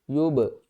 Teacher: با ساکن ہے تو اس کے اوپر کلکلا کریں گے، سب سے چھوٹے درجے والا